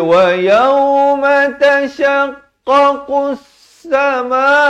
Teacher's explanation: Alif lam syamsiah. Lam tidak dibunyikan.